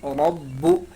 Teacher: با میں کیا کرنا ہے؟ با کے اوپر تشدید ہے اس لیے اس کو با کو را کے ساتھ ملائیں گے، اور با پر تشدید ہے اسی لیے اس میں تھوڑی سی سختی ہم پیدا کریں